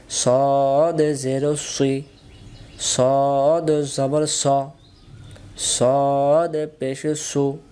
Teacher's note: সদ অক্ষর সামনের নিচের দাঁতের আগা থেকে শীর্ষসহ মোটা করে পড়তে হয়